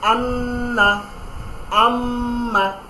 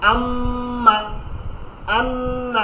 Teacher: গুন্না হচ্ছে আপনার নাকের মাধ্যমে একটি ধ্বনি তৈরি হবে, একটা সাউন্ড তৈরি হবে নাকের ভেতর থেকে, এবং এটাকে দ্বিগুণ টানতে হবে। আম্মা, অর্থাৎ নর্মালি মিমের যে উচ্চারণ সেটাকে ডবল করে দিতে হবে।